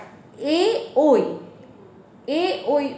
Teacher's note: উচ্চারণে কণ্ঠ এবং তালু দুটোকেই নির্দেশ করে, তাই এটির উচ্চারণ স্থান কণ্ঠ এবং তালু।